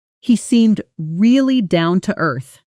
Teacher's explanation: Notice how really and down often blend slightly in fast casual speech. The sounds sliding together smoothly rather than staying sharply separated.